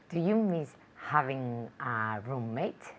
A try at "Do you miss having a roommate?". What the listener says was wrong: Okay, where's the intonation though? I didn't hear the intonation.